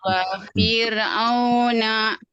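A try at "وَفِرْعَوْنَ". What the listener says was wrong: V-nya jangan panjang. Wa fir'auna.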